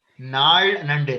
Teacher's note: Nal Nande, that is the retroflex la.